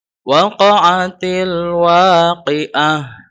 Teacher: Tapi kalau dibaca waqaf atau berhenti, maka taknya menjadi huruf H. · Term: ta marbutah